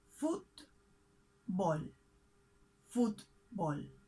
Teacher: we separate this word in two syllables and we mark the accent on the first one foot ball football in spanish all words have an accent all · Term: stressed syllable